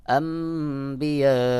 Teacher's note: জের হি এখানে দেখুন নুন সাকিনের পরে বা ইকলাবের হরফ এখানে নুন সাকিন কে বাদ দিয়ে মিম দ্বারা বদল করে পড়তে হবে